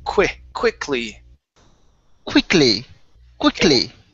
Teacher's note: instead of saying quickly with a short or sorry a long e sound let's use the short i